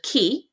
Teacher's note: as the e in key is formed at the front of the mouth you are more likely to feel the sound closer to the front